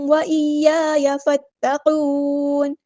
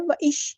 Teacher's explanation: ایسے یا میں شین کی آواز نہیں چاہیے